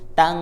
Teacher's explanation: ujung lidahnya turun, jadi lupa diangkat. Tang, yang menempel malah pangkal lidah. Nah, kalau pangkal lidah berarti dia samarnya dengan pangkal lidah, bukan ujung lidah.